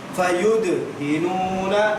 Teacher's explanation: دال پر ساکن ہے, آواز پلٹ کر آئے گی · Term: قلقلہ